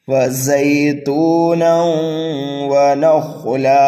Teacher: تنوین کے بعد حروف یرملون میں سے واو آ رہا ہے، یہاں پر ادغام ہوگا. غنے کے ساتھ ہم پڑھیں گے ایک الف کے برابر · زا کو ہم سیٹی کی آواز دے کر کے پڑھیں گے، جلدی پڑھیں گے یالین کی وجہ سے.